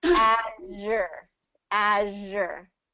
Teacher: And make sure it's kind of that friction. It's the same as the SH sound, but just with the voice.